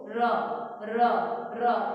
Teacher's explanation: ર એટલે જીભનું આગળનું જે ટેરવું છે એ દાંતથી નજીક રહીને પાછું આવે છે અને કંપ દર્શાવે છે. સ્પર્શ નથી થતો. · સહેજ જ આપણો સ્પર્શ લઈને પાછું આવે છે, એટલે કંપન થઈને પાછું આવે છે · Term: પ્રકંપી ર